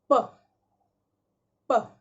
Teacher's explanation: जब आप प कह रहे हैं तो आपने दोनों लिप्स को मिलाकर हटा रहे हैं, प। And when you touch your throat you won't feel any vibration over here, प। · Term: वॉइसलेस